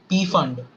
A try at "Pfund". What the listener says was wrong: Fund. It's not P fund, it's just fund. P is silent.